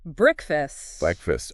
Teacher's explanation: The break part is a bit quicker here. Stress on the first syllable.